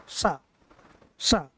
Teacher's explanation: हमारी जो जीभ है वो कहीं एक ऊपर तालु में लगती है, इसलिए इसको तालव्य बोलते हैं। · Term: तालव्य सा